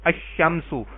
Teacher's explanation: شین حروف شمسی میں سے ہے تو ال کا لام نہیں پڑھا گیا